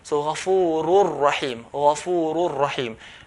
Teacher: And this is when nun sakin. When with the tanween, ghafurun rahim will be ghafurur, ghafurur, no ghunna sound.